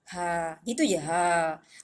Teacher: Huruf ha ini dari segi makhraj dia dari halkum. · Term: huruf halkum